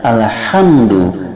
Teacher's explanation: Sedangkan ha pada alhamdu itu berada pada tengah tenggorokan sehingga udara ditekan di tengah tenggorokan.